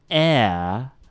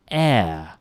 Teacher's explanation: there is that glide in the vowel sound. You hear that movement in the tongue. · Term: diphthong